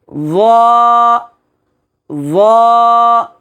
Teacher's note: জয়ের মাখরাজ হলো জিহ্বার আগা সামনের উপরে 2 দাঁতের আগার সঙ্গে লাগায়া